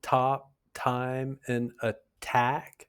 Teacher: It happens at the start of stressed syllables. So words like top, time, and attack all have the aspirated T sounds because the T comes at the beginning of a stressed syllable.